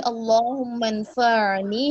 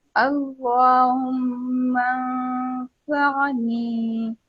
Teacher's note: अब आप देखिए अल्लाहुम्मा अंफअनी, ये क्या है, आइन सिर्फ साकिन है ना, ऐसा लग रहा है जैसे पेश बन रहा है ना